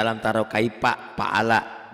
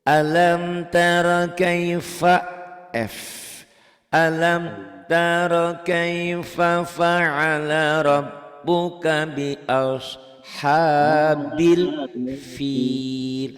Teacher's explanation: Seluruh Sunda pasti P umumnya. Termasuk saya. Harusnya kan ini F ya.